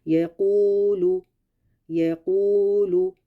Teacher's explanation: یا پہ صرف زبر ہے، اس کو ہم نے لمبا نہیں کرنا، لیکن قو یہ اس کے ساتھ حروف مدہ لگ گیا، واو مدہ بن گئی تو اس کو اب ہم لمبا کریں گے